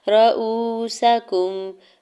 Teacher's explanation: واو ساکن سے پہلے حمزہ کے اوپر پیش ہے، رؤوسکم، واو مدہ ہو رہا ہے، دو حرکت کھینچ کے ادا کریں گے